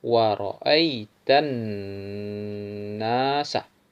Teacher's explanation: pada lafal annas itu dengung, gunnah, karena nun bertasdid disebut wajibul gunnah